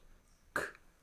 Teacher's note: This is a voiceless sound. K. There's no vibration in your throat.